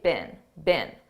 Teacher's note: in British English they pronounce it more stressed Bean but in American English we don't do that